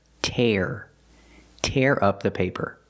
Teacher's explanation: We use the air sound like hair and chair.